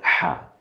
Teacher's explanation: তো আমরা মাঝখান বরাবর হা, একটু ফ্যাস ফ্যাসা আওয়াজ হবে